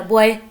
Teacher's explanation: ओ और इसके साथ ए भी हमें साउंड करता है, इसलिए ये भी डिफ्थोंग में फॉल करेगा।